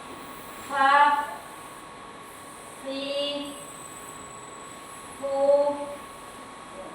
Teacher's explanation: Kalau gigi atasnya itu nyentuh di badan bibir bawah itu situ terus.